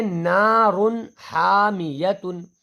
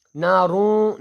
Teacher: اس کے آگے نارن حامیتن، نارون نہیں کہنا ہے، نارن، رن، را 2 پیش، رن۔ تو یہ جو رن میں نون کی آواز نکل رہی ہے اس کو ظاہر کر کے پڑھا جائے گا